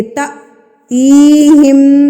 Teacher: جو الف سے پہلے حرف ہوگا، یعنی کہ تا ہے تو ہم تا کو جھٹکا دے دیں گے. تا تیہم، تی کو ہم کھینچ کے پڑھیں گے کیونکہ یہ مدہ ہے